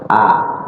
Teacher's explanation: A, huruf alif keluarnya di mana? Di tenggorokan paling bawah.